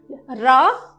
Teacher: जीभ का अग्रभाग, जीभ का जो अग्रभाग होता है वो किसके पास जाता है? मसूड़े के पास 2-3 बार हिलने से लुंठित ध्वनि उच्चारित होती है।